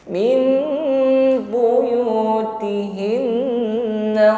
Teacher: La tukhrijuhunna min, ada nun sukun bertemu ba, maka min yang seharusnya pengucapan nun sukun ini diganti menjadi mim ya, bibirnya rapat dan dengungkan ya. Hukum iqlab namanya.